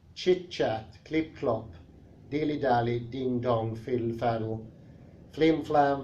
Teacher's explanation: Unless the two parts rhyme as they do in Helter Skelter and Razzle Dazzle, the first invariably is a high front vowel and the second a low back vowel